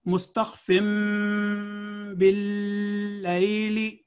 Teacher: बाद अल्फाज में नून साकिन या तनवीन के मान बाद एक छोटी सी मीम लिखी होती है, इसको इस्तलाहन मीम मकलूबा कहा जाता है, यानी नून साकिन और तनवीन से बदली हुई मीम। ऐसे अल्फाज में नून साकिन या तनवीन के बजाय मीम साकिन अदा की जाएगी।